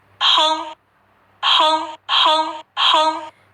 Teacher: that's a higher pitch and it is rising